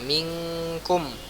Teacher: kalau nun atau tanwin berjumpa dengan kaf ya dan qaf, dia maka menjadi eng ya